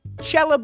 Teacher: When the C is followed by an E, the “kuh” became a “chuh.”